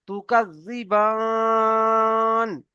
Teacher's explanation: যে হুরুফে মাদের পরে থেমেছি, তাই একে মাদ্দে আরজি ওয়াকফি বলা হয়। একে 3 থেকে 4 আলিফ পরিমাণ টান দিয়ে পড়তে হয়।